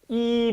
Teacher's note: 세 가지를 섞어서 자, 이 모음이 앞으로는 이제 이가 아니에요. 이 모음이 아니라 평순, 전설, 고모음. 네, 평순, 전설, 고모음이다.